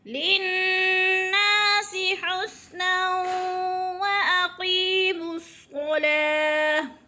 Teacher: حسنا پہ وہ مشدد ادغام ہو رہا ہے دو زبر تنوین کے بعد یعنی ملا کے پڑھنا ہے. اور حسنا پہ واقی پہ جو ہے یا مدہ، یا ساکن سے پہلے قوف کے نیچے زیر ہے تو یا مدہ ایک الف کے برابر کھینچ کر پڑھنا ہے.